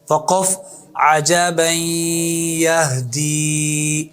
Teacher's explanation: تو یہ نون تنوین کے بعد یا آئی، یا آ جائے تو نون تنوین کو یا میں داخل بھی کریں گے اور ادغام مع الغنہ کے ساتھ پڑھیں گے